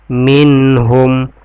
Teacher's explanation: Minhum, nun ketemu dengan ha, itu izhar, dibaca jelas.